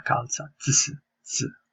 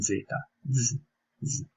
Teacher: Un altro suono critico della lingua italiana è il suono la pronuncia della lettera Z. La Z può essere pronunciata in due modi. Il modo più familiare alla lingua inglese è il suono sordo, presente nella parola calza, ts, ts.